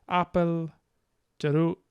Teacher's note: We learned that coda K, I think, is a glottal stop.